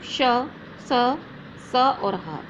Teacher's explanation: इनके उच्चारण में निश्वास वायु घर्षण के साथ मुख से बाहर निकलती है, अतः इन्हें ऊष्म व्यंजन कहते हैं।